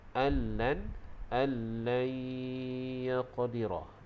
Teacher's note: Allan itu kita dengung dua harakat, hukum idgham ma'al gunnah.